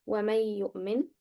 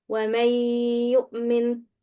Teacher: it's incorrect if I say وَمَن يُؤْمِن without making the sound of ghunnah. I should make it and read it like this. · So drop the sound of noon and merge and make ghunnah.